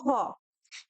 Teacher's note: হ উচ্চারণের সময় কিন্তু বাতাস মুখবিবর থেকে ঘর্ষণ খেয়ে বের হয়, তাই এটি কিন্তু ঊষ্মধ্বনি। একই সাথে এটি উচ্চারণে কিন্তু স্বরতন্ত্রী অনুপ্রাণিত হয়, যেমন ঘোষ, এবং বেশি বাতাসের প্রয়োজন হয় যেমন মহাপ্রাণ ধ্বনি। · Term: উষ্ম বা ঘোষ মহাপ্রাণ ধ্বনি